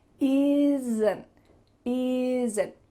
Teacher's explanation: There's a little sound added between the S and the N. This is called a schwa, and it shows up a lot all over English.